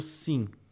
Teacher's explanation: Que tu tem um s fazendo som aqui, só que o i que está do lado, ó, ele está nasalizado por esse m